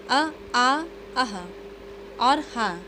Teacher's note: इन सभी का उच्चारण किया जाता है कंठ से यानी गले से